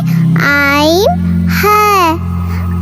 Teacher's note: 2 number মাখরাজ হলো হলকের মাঝখান থেকে, এখান থেকে আসে আইন